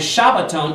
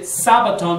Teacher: So it's translated sabbaton because in Greek they don't have the sh sound in Greek. So they're left with an S. And shabbaton is a direct transplant from Hebrew into the Greek and neutering it with the letter sheen becoming the S sound.